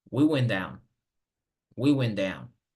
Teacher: We went down, como pueden ver, la T con la D son sonidos más parecidos, entonces esto es un sonido o es un fenómeno de asimilación. La T asimila más bien la D asimila a la T. Podemos imaginarnos que la T desaparece.